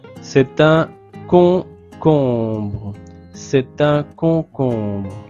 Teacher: Alors le O et le O, c'est la même voyelle nasale on. · en parlant, je fais la connexion, la liaison entre le T et l'article